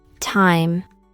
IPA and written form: taɪm (time)